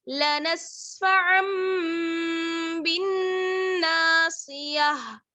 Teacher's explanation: تو ہم کیا کرتے ہیں، اس سچویشن میں ہم میم سے بدل کر پڑھتے ہیں. ٹھیک ہے, نون کی آواز کو میم سے بدل کر پڑھتے ہیں · نون پر غنہ ہوگا. ٹھیک ہے, نون مشدد ہے. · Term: نون ساکن کا اقلاب